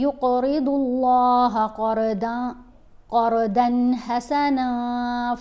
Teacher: یہاں پر ضاد کو موٹا پڑھنا ہے